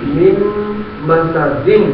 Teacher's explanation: نون ساکن کے بعد میم آ گئی تو نون نہیں پڑھی جائے گی میم پڑھی جائے گی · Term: میم غنہ